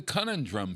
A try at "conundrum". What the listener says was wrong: I thought it was conundrum. You said conundrum, which you're pronouncing it by syllable.